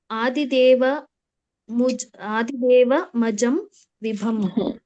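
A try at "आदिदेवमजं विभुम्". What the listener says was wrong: ಮಜಂ ಅಂತ ಶಬ್ದ ಇಲ್ಲ, ಅದು ಆದಿದೇವಂ ಅಜಂ. ಅದು ಆದಿದೇವಂ ಅಂತ ಹೇಳ್ಬೇಕು.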